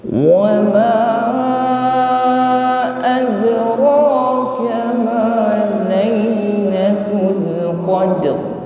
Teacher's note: Wama ad huruf dal berharokat sukun, jangan ragu-ragu untuk mengeluarkan bunyi pantulan ad, ya, karena ini berada di tengah-tengah kalimat, jadi qalqalahnya sughra, qalqalahnya atau bunyi pantulannya ringan